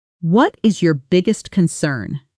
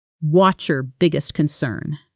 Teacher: In fast speech, what's your often blends together into something closer to watcher and biggest concern carries the main stress on big and con while the smaller words around them fade into the background.